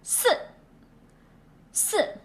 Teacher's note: The number 4 in Chinese is the fourth one, like when you say no.